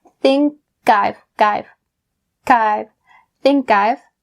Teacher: Think, and then I've. Bring that k sound over to I've.